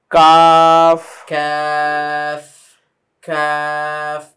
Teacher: জিহ্বার গোড়া থেকে একটু সামনে আসবে